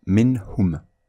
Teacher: Si le noun avec soukoun ou le tanwin est suivi par l'une de ces lettres, ha, kha, ayn, khayn, ha, hamza, alif, alors le noun avec soukoun doit être prononcé bref et clair. Avec cet exemple, on lira minhum. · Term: la clarification al-idhar